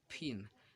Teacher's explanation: the voiceless explosives p t and K are always unaspirated in Indian English